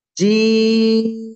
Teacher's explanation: জিম তিন আলিফ টেনে উচ্চারণ করব